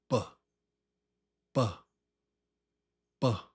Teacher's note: The lips pop with your voice.